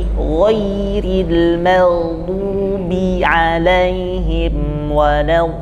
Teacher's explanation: Kata waladdallin tipiskan dengan posisi mulut ditarik ke samping supaya keluarnya dari bagian dalam, tidak bagian depan.